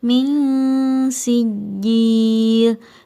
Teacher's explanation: Ming Hai musinggih disini terdapat nun mati bertemu dengan Shin maka cara membacanya seimbang antara suara dengung dan suara samarnya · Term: ikhfa wusta